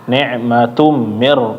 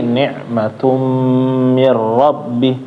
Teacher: Nun dan mim ketika tasdid ditahan ya jangan sampai langsung pindah ditunaikan dulu ditahan Kayak misalnya nikmatum nah Tum ditahan sedikit ya jangan langsung pindah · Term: dengung